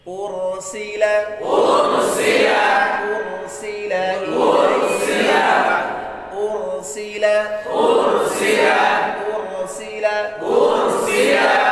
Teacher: উরসিলা উরসিলা উরসিলা উরসিলা উরসিলা উরসিলা উরসিলা এরকম সামান্য আওয়াজে হবে না। রকে তো পুর করবেন, সাথে কি করবেন? তাকরার করতে হবে, আবার ঠোঁট গোল করা যাবে না। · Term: র সাকিন